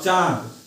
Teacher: मतलब जैसे मुख और नाक दोनों से बोला जाए तो अनुनासिक कहलाता है।